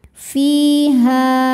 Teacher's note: Karena ada alif didahului baris fathah ya, maka ha-nya panjang dua harakat. Fiha. Tanda wakafnya dinamakan dengan alwaqfu aula yang artinya berhenti lebih utama. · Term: mad thobi'i